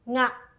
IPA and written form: ŋa (Nga)